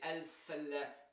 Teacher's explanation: That is because the articulation point of lam, of L, and the articulation of the letter tha, very close to each other, they conflict